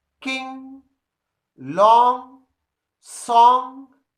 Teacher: there is not a clear articulation of the sound g, which is found in Indian English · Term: ng sound